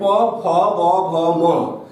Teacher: প, ফ, ব, ভ, ম, ওষ্ঠ অধর এক জায়গায় আসছে, তাই এদেরকে আমরা বলছি ওষ্ঠ ব্যঞ্জন।